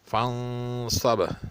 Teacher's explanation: فانصب نون ساکن ہے اور اس کے بعد حروف ہلکی نہیں ہے، اس لیے اس پر اخفا کیا جائے گا۔